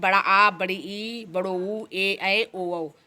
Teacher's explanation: जिन स्वरों के उच्चारण में लघु स्वर से दुगना समय लगता है, मतलब जो ह्रस्व स्वर जिन्हें लघु स्वर भी कहते हैं, इनसे जो दुगना समय लगता है तो वो हमारा ह्रस्व स्वर दीर्घ स्वर होता है।